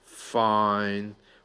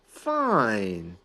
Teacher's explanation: One has a large breath, fine, with a downward trend. One is going up, fine.